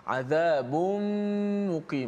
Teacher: tutup mulut senang. Tanwin masuk dalam mim.